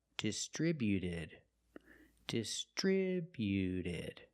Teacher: When we add e d, the t at the end is between vowels. So, it's a fast d, not distributed, but distributed.